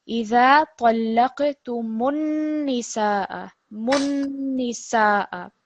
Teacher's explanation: this time you've got a noon with a shadda, and you're producing a nasal sound when you're joining these. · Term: noon mushaddad